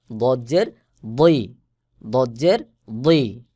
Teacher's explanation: মোটা করে গোলমত হয়ে উচ্চারণ হবে দাল স্বাভাবিকভাবে উচ্চারণ হয় আর দদের আওয়াজ মোটা হয়ে গোল মতো করে উচ্চারণ হয়